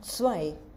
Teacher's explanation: Or Althochdeutsche Lautverschiebung. So the T at the beginning has moved to a Z. So it has become a fricative. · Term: second consonant shift